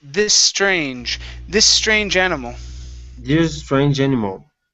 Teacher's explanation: combine these s sounds